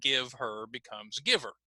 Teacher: talked about one example and that was the disappearing h so we can cut the consonant h sound